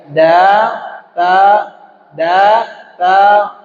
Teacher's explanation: da itu ujung lidah menembak ke Pangkal gigi seri bagian atas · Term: huruf Dal